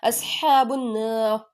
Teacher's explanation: را ساکن سے پہلے زبر آ رہا ہے، را کو پر پڑھیں گے